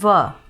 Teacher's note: दंतोष्ठ यानी कि व, इसमें दांत और ओष्ठ दोनों का जो है योगदान रहता है इसका उच्चारण करने में